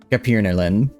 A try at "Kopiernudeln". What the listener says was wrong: Kopiernudeln. No, you say it with a long E. Kopiernudeln.